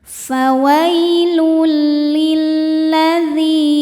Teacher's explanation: Karena lamnya tasydid. Lam tasdid mengandung dua lam. Lam sukun dan lam fathah. Yang sukun tidak dibaca masuk langsung ke lam kedua.